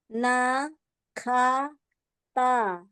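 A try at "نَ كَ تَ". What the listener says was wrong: Ya, coba dibuka lagi rongga mulutnya ya.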